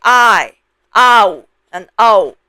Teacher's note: English speakers tend to make these sounds into diphthongs under the influence of English pronunciation. They would say "I", "ow", and "o", especially when they see these Pinyin symbols.